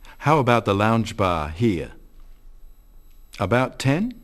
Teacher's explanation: And he says, at about 10, as a question.